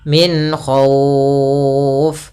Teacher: kita membaca bunyi nun dengan jelas tanpa menahannya. Karena setelah huruf nun datang huruf kha, di mana kha adalah huruf yang makhrajnya keluar dari tenggorokan kita. Jadi, ini harus jelas. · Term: izhar halqi